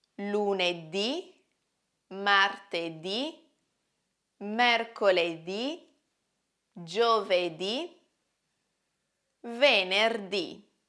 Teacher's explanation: sono parole tronche, cioè hanno l'accento sull'ultima sillaba